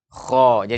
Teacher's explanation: rapat Iya sehingga suara membumbung ke atas itulah yang namanya istilah terangkatnya pangkal lidah sehingga suara membumbung ke langit-langit menuju ke langit-langit menghasilkan huruf itu akan dibaca dengan tebal sehingga